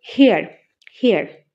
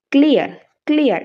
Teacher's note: আমাদের টাংটা এক জায়গা থেকে আরেক জায়গায় আমাদের মুভ হচ্ছে আর সেই ধরনের যে সাউন্ড গুলো হয় সেটাকে বলা হয় double vowel sound ডিপথস impure vowel sound অথবা গ্লাইড ভাওয়েল সাউন্ড আর এরকম ধরনের